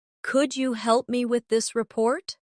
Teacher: Pay attention to the stress. The words help and report carry more weight in the sentence.